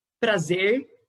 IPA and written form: Prazeɹ (Prazer)